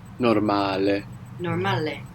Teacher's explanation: we have the accent on the second last syllable · And the vowels, we're pronouncing them clearly, not like English when we say normal.